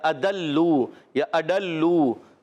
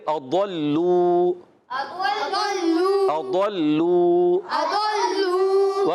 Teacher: ضاد وہی مخرج زبان کی کروٹ یا زبان کا بغلی کنارہ, اوپر کی داڑوں کی جڑیں, یعنی اضراس علیاء عربی میں اس کو کہتے ہیں.